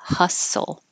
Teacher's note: we don't use the T at all you're going from the s to the L